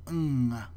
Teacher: The symbol engma is used to indicate the voiced velar nasal. This is the nasal consonant sound that we make at the end of a word like king.